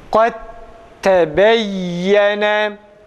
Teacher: dalı tam halis bir ta harfine çeviriyoruz. Kat tebeyyene normalde bu iki kelime kayde tebeyyene kelimelerini kat tebeyyene şeklinde okuyoruz. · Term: idgam